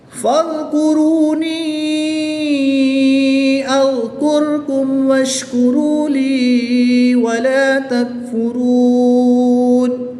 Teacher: یا مدہ کے بعد حمزہ دوسرے کلمے میں ہے تو یہاں پر مد منفصل ہوگی. 2 سے 3 الف تک کھینچ کر پڑھیں گے. وقف کی حالت میں یہاں پر مد عارض ہوگی.